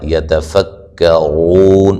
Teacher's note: یتفکرون را کو موٹا ادا کریں گے ، وہ مدہ ہے اور وقفاً بڑی مد کے ساتھ پڑھ